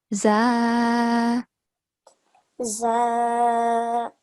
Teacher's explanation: So for za, the tip of the tongue is simply touching the upper front two teeth. Okay? But there is no, we don't have to make the thick sound.